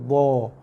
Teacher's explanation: Okey, keluarnya makhraj huruf dha. Okey, dha juga huruf tebal dan juga huruf meninggi. Sebab tu pastikan tengah dan pangkal lidah dia juga meninggi. Sebab tu huruf dha dia meninggi dan tebal.